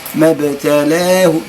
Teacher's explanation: ما ابتلاه، هنا اللام تحتها نقطة غليظة اللي هي الإمالة، الإمالة أميل بفتحة اللام نحو الكسر